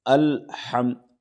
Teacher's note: ادائیگی ہا بیچ حلق سے نکالیں گے، تھوڑا سا یہ ہا میں پریشر رہے گا۔